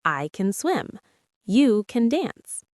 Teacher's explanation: In positive sentences, we usually say can with a weak sound, ken. Listen.